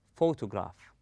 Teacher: We stress on pho. We place a strength or force on the first syllable and we go easy on the rest of the word. We say photograph.